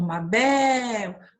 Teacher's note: o bé, essa sílaba que se estende, ela é a sílaba tônica